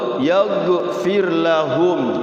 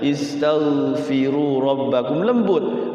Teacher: Cuman gha itu ketika sukun, gha itu tidak boleh mantul. Kadang cenderung mantul gha ini tuh. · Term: huruf ghain